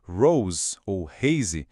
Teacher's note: Esse R não é aquele R caipira do português, nem o R enrolado do inglês. É um som arranhado que vem da garganta mesmo. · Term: R alemão